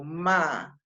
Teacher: esa acentuación en la I separa esa I de la A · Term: hiato